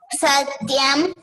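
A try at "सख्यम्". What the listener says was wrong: Sakyam, not Satyam. Sakyam. Sakyam means friend.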